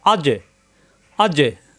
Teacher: জিহ্বার মাঝখানে উপরে তালিতে লাগবে ধাক্কা হবে